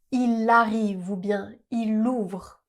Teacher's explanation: Mais devant une voyelle, ce n'est pas le cas. On fait bien la liaison avec le L.